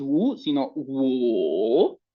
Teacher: tenemos una U con un acento, mejor dicho, tono, que baja y que sube. Primero va hacia abajo y luego sube. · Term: tono 3